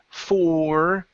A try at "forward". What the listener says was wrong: bring your tongue up just a little bit more for that R.